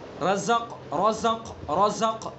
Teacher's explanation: زا کے اندر سختی، حروف صفیریہ میں سے اس کی جو صفت ہے صفیر ادا کریں گے